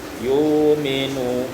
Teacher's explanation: yu'minu ibdalul hamzati wawan, tukar hamzah waw